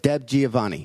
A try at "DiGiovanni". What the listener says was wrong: DiGiovanni. Yeah, exactly. DiGiovanni.